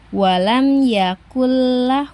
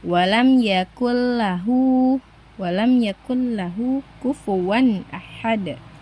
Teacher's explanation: Nah, jadi ketika teman-teman membaca Al-Qur'an ee lalu menemukan nun sukun atau tanwin bertemu dengan lam dan ro, maka harus dibaca tanpa disertai dengung di hidung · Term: idgam bila guna